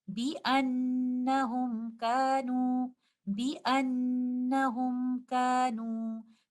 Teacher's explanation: So this is most complete gunna here in Nun Shadda and incomplete gunna here because Mim Sakina is in an idhar condition.